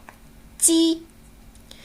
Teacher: 在发音时，舌面前部抬起，紧贴硬腭前端